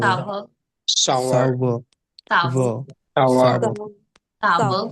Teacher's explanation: R sound नहीं आएगी. It's sour.